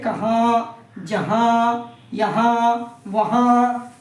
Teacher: نون غنہ وہ نون ہے جس کی آواز ناک سے نکلتی ہے